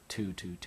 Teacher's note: And again, you want to touch your tongue for the thu right on the very tip of your teeth. For the tu, it's right where your gums and your teeth meet behind your teeth.